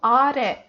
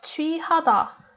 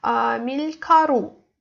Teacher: the stress is always on the last syllable.